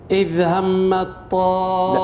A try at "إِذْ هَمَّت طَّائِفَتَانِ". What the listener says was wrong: لا شد على الميم، غن جيب الغنة. إذ هم الطائفتان.